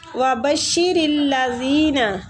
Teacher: را کو لام کے ساتھ ملائیں گے